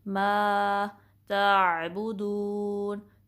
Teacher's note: ता को बारीक पढ़ेंगे, लेटर जो दूसरा वाला तो है उस जैसा पुर नहीं पढ़ना, हैवी नहीं पढ़ना।